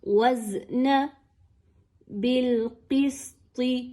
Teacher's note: وَأَقِيمُوا الْوَزْنَ زا ساکن کے ساتھ موجود ہے، جزم کی علامت کے ساتھ ہے. اس زا کو انتہائی سختی کے ساتھ پڑھیے، یعنی اس میں سیٹی کی آواز کو لائیے